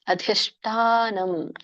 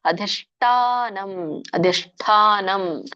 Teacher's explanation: ಅಧಿಷ್ಠಾನಂ ಠ ಮಹಾಪ್ರಾಣ ಇದೆ ಅಧಿಷ್ಠ ಶ ಮೂರ್ಧನಿಷ ಇದೆ ಮತ್ತೆ ದೊಡ್ಡ ಠಿದೆ ಸೋ ಹಾಗಾಗಿ ಮೂರ್ಧನಿಷ ಜೊತೆಗೆ